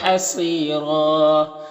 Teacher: یہاں پر یا ساکن سے پہلے را کے نیچے زیر تو یا مدہ ہوگا، اسے ایک الف کے برابر کھینچیں گے۔ صاد حروف مستعلیہ میں سے پر پڑھیں گے، یہاں پر یا مدہ ہے اور دو زبر ہے، یہاں پر وقف کریں گے تو ایک زبر کے ساتھ الف پڑھیں گے اور را کو پر پڑھیں گے، اس طرح سے۔